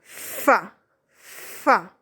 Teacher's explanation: فا ادا ہوتا ہے جب آپ کے اوپر والے سامنے والے دو دانت آپ کے نچلے ہونٹوں کے اندرونی حصے سے ملتے ہیں